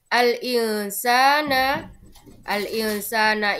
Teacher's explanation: Karena ada nun sukun bertemu sin. Ketika ada nun sukun bertemu sin, maka cara membacanya adalah samar dan mendengung. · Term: Ikhfa, bacaan ikhfa